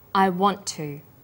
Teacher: is held slightly longer on the tongue then to is pronounced the T sound is pronounced only once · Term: consonant plus same consonant linking